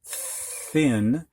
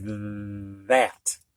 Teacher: th can be unvoiced and just kind of be a breath of air like thin or it can be voiced and have a vibration to it like that